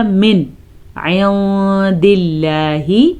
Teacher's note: نون ساکن کے بعد اگر حروف حلقی میں سے کوئی حرف آ جائے تو نون ساکن یا تنوین کو ظاہر کر کے پڑھتے ہیں، بغیر غنے کے پڑھتے ہیں۔ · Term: اظہار